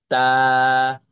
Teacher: উচ্চারণ হবে না যখন তা বলবেন তখন ওখান থেকে ছুটে যাবে তখন জিহবার আগাটা ওপরের বড় দুই দাঁতের গোড়ার থেকে ছুটে গিয়ে উচ্চারণটা হবে তবে প্রথমত সেখানে লাগাতে হবে তা এক আলিফ টান দিবেন তা